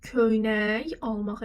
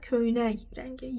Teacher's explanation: Y yox, xışdırıq karlaşdı. Çünki samitlə başlanan söz gəlir.